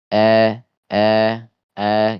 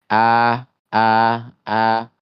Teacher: Kalau a Indonesia itu lebih terbuka dia mulutnya. A a. Sedangkan kalau fathah di Arab gitu ya, di Al-Qur'an itu dia tidak seperti a Indonesia. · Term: a di Indonesia